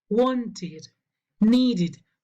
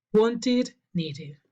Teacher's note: Y la excepción es cuando un verbo termina con este sonido o con este sonido, ahí sí se pronuncia ed, se pronuncia id